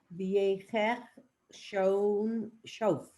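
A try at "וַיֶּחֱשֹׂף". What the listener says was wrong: Nope, it's a sin because the dots, there's two dots, the dot and the dot for the vowel. So it's Vayechesof.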